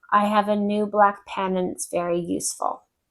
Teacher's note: So I said perfect pronunciation, perfect English, but the intonation was completely flat